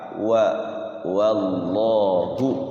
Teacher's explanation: Jadi kalau mengucapkan lafaz Allah jangan pakai o ya, termasuk wa. Waw itu kan fathah pakai wa, jangan sampai wo. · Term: waw fathah